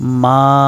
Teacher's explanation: মধ্যে মুনফাসিল 3 আলিফ, 3 আলিফ টানিয়া পড়িতে হয়